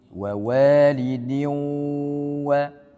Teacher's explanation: Jadi untuk idgham bi gunnah nun sukun atau tanwin bertemu dengan waw ataupun ya, maka pengucapan waw itu hanya 50%. Kemudian sisanya 50% itu adalah gunnahnya atau dengungnya.